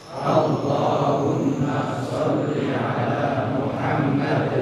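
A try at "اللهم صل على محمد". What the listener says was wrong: Ya Allahumma, jangan berhenti. Jangan bilang Allahumma salli. Itu jadi mimnya panjang. Langsung Allahumma salli ala Muhammad.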